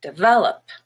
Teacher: The word develop has a stress on the second E, the middle syllable, and that one is red, but the first E is just a schwa, devel, and then the OP is up, also a schwa, develop.